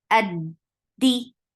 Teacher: Hamza is sharp. Dal is sharp. The sounds are cutting off right away.